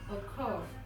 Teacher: For occur, the stress is on the last syllable.